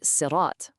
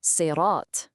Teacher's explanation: To say it right, your mouth has to get full and you produce this thick sound. Sirat. Hear that? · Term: heavy sod